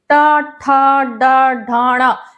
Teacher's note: जो हमारी जीभ है वो मसूड़ा जो दांत है उसके अंदर के हिस्से को छूती है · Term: मूर्धा